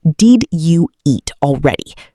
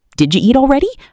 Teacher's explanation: Naturally, it sounds like, did you eat already? That D-U becomes J.